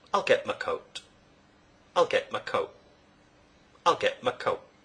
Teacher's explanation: a glottal stop is used in place of the t in both get and coat.